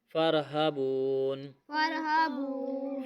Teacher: بون پہ واو مدہ ہے لمبا کر کے پڑھیں گے۔ · آیت ختم ہو رہی ہے اس لیے ہم نے یہاں پہ وقف کیا اور نون کی زیر کو ہم نہیں پڑھ رہے وقف کی صورت میں۔